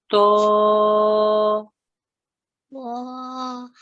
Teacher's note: try very hard not to get the w sound in there